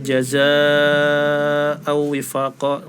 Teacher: Mat wajib dibaca sampai 6 harokat.